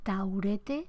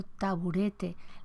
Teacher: La U, que es labio-velar, absorbe la labialidad de la oclusiva en una zona o en un nivel sociolingüístico en que las oclusivas sonoras tienden a debilitarse. Esa B se debilita y se absorbe en la U.